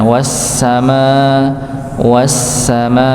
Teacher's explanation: Kalau kita tahu sin dia mengalir maka di dialirkan wasama wasama ya dialirkan.